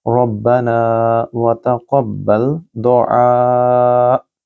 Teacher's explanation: یہاں ربنا کو لمبا کریں، را کو موٹا پڑھیں گے